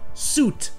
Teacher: Ici, il y a un i, mais il est muet. Donc ça se prononce simplement suit, avec le son ou. Et donc ça fait que suit rime parfaitement avec boot.